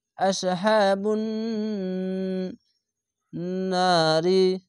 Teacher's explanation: এখানে নুনের উপরে তাজিদ তার জন্য ওয়াজিব গুন্না হচ্ছে